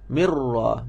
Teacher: Ra ni tak dapat dengung sebab dia memang bergetar. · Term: takrir